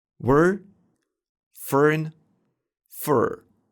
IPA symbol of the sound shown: ɝ